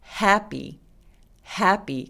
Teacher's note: h는 이렇게 바람 소리가 나죠